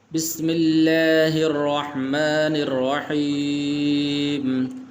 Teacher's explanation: لفظ اللہ ہے یہاں پر، تو یہاں پر اس سے پہلے چونکہ حرف پر زیر ہے تو اس لیے اس کو موٹا نہیں کرنا